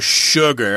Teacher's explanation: sugar, of course, is a weird word because the S has an SH sound there